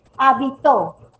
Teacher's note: ¿Dónde recae la mayor fuerza de voz? En la última sílaba. En la última palabra es aguda.